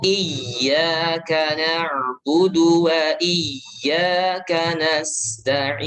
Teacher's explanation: Nasta'in itu di situ hamas ya, dialirkan. Nafasnya dialirkan, suara juga dialirkan karena sin selain dia hamas dia juga rofa.